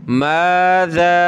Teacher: ذال پہ زبان نکالیں تھوڑی سی باہر